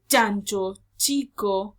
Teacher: vamos a utilizar nuestra lengua chocando necesariamente con nuestro paladar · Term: africado